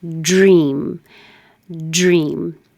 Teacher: Dragging it with pressure to curl it back for the R. And that's when the air goes over the tongue and creates that j noise. So it does sound j. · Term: American DR